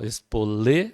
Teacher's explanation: a sílaba forte é o lê, paroxítona